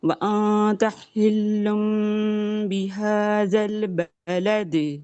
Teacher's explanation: بعد، جی تنوین یا نون ساکن کے بعد ہمیں جب با نظر آتا ہے نا تو ہم کیا کرتے ہیں کہ اسے ہم نون کی آواز کو میم میں، آپ نے صحیح بتایا تھا، نون کی آواز کو میم میں بدل دیتے ہیں، پھر میم پر ہونٹ بند رہتے ہیں، با پر کھل جاتے ہیں · اور ہم جو اس کو جب ساکن کریں گے تو دال پر ہم ساکن ہوگا تو قلقلہ ہو جائے گا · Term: اقلاب